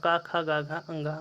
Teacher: क की लाइन का जो उच्चारण होगा क ख ग घ अ वह भी कंठ होंगे